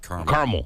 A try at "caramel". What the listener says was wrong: You always say caramel. You're very, very... Yes. Very quick with your syllables around here.